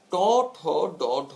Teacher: আবার ট ঠ ড ঢ মূর্ধন্য এবং একই সঙ্গে মূর্ধন্য স, র, ডয় শূন্য র এবং ঢয় শূন্য র, এই সর্বমোট 5 4 9টি, এই 9টি বর্ণ হচ্ছে পশ্চাৎ দন্তমূলীয় উচ্চারণ স্থান থেকে উচ্চারিত হয় এবং এই কারণে উচ্চারণ স্থান অনুযায়ী এদের নাম হচ্ছে মূর্ধন্য বা পশ্চাৎ দন্তমূলীয়।